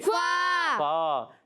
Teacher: فا ادا ہوتا ہے اوپر والی دانتوں کے کنارے، جب نیچے ہونٹ کے تر حصے سے لگتے ہیں تو ادا ہوتا ہے فا۔